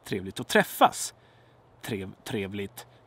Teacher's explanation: But in this sentence, trevligt att träffas. Trevligt. It's a monotone, right?